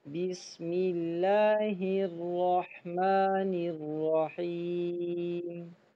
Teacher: بسم اللہ، بسم اللہ نہیں پڑھنا، با کے نیچے زیر کو باریک کرنا ہے